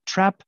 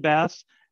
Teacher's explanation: So a short, low front vowel compared to a long, low back vowel.